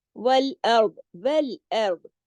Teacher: ول باریک ارض موٹا ارض موٹا را بھی موٹا ہے